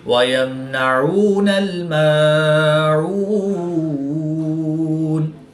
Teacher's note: وقف کی حالت میں یہاں پر مد عارض ہوگی، 2 سے 3 الف تک کھینچ کر پڑھیں گے۔